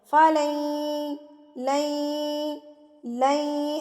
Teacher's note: کفاروں فلن یقبل، فلن، یہاں پر ادغام ہو رہا ہے، نون ساکن کے بعد یرملون کا یا آ گیا ہے، تو جب آپ نے یا سے ملانا ہے تو غنہ کے ساتھ ملانا ہے، یعنی کہ ناک میں آواز لے جانی ہے